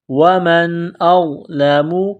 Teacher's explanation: ہے، نون ساکن کے بعد حمزہ ہے، حروف حلقی ہے تو نون ساکن پر غنہ نہیں کریں گے، آواز ناک میں نہیں چھپائیں گے ، ومن اظلم، حمزہ کو غا کے ساتھ پلس کرنا ہے،